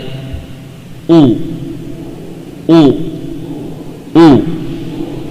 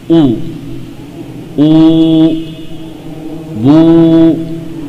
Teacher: Wawu dengan cara bagaimana? Menghimpun dua bibir. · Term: wawu mad